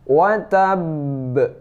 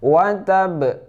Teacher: Baru wa tabb. Ditahan dulu ba-nya seperti bertasydid, baru ke pantulannya. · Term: qalqalah akbar